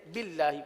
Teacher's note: اللہ کے لام کو باریک اس لیے پڑھیں گے کہ اللہ کے لام سے پہلے زیر ہے